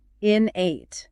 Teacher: The stress is on that first syllable. Innate, not innate.